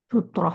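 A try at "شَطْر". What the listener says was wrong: bukan sutra, bukan. Kalau sutra itu pakai sin kecil, pakai ta dari kata sataro. Kalau ini kan syatoro, ya, beda.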